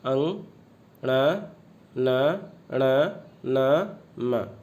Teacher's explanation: नाक से बोले जाते हैं, इसलिए इन्हें नासिका या नासिक के व्यंजन वर्ण कहते हैं।